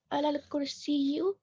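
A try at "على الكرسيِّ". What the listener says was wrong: यू होगा या ही होगा? जी यहाँ पे लगाएंगे कसरा. ठीक है, तशदीद के नीचे लगाएंगे.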